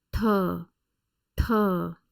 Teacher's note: The second one is retroflex aspirated T, written as THA.